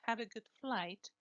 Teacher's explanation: have here is the main verb and so it is stressed